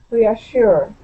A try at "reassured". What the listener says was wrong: Okay, give me a good D sound at the end. Reassured.